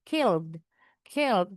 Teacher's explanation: walaupun ed-nya enggak bunyi tapi kedengaran D-nya